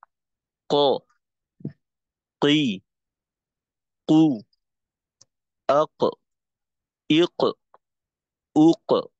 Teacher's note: তো কফের ক্ষেত্রে কফের মাখরাজি হলো জিহ্বার গোড়া। তো এখানে জিহ্বার গোড়া অটোমেটিকলি তালু দিকে শুধুমাত্র উঠে না, তালুতে লেগেও যায়